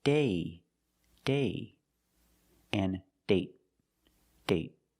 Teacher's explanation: So with date, we see the vowel is shorter because you have a stop T at the end.